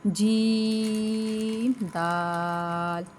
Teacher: جیم کو 3 الف کی مقدار دراز کرنا ہے، دال کو بھی 3 الف کی مقدار دراز کرنا ہے، اور یہ دونوں کی مقدار برابر ہونی چاہیے۔